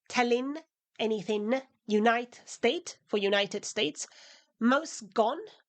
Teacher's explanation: She often drops the end of words, tellin, anything, unite, state for United States, most gone. So she elides ing endings as well as Ds and Ss and Ts.